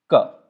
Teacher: the root of the tongue, it comes in contact with the soft palate and you get the sound k. That is the very first possible position where the air can be stopped to produce the first consonantal sound.